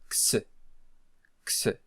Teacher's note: The sound of Xi is the sound of K followed by S